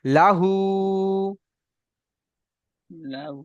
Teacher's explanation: লামের উপরে জবর আছে, এটা হারাকাতের পড়া, একে টান দেওয়া যাবে না, একে তাড়াতাড়ি পড়তে হবে